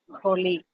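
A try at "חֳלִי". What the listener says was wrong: It should not be holy, but it should be hurried O sound. Holy. is a guttural. The guttural is khet. Okay, so it should be holy.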